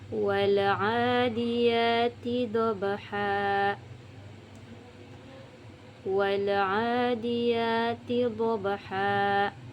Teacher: Di situ ada huruf ba di tengah lafal. Nah, kita membacanya dengan pantulan sedang, kemudian melebur pada huruf selanjutnya